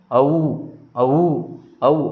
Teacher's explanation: అ plus ఊ అనే రెండు అచ్చులు కలవడం వల్ల ఔర్పడుతుంది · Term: సంయుక్త అచ్చులు